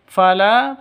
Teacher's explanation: fala panjang 2 ketukan karena ada alif diawali dengan fathah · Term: mad tabi'i